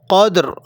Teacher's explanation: اگر آپ را پر وقف کریں گے تو یہ را موٹی پڑھی جائے گی، قدر، لیکن اگر وقف نہیں کریں گے تو یہ را باریک پڑھی جائے گی۔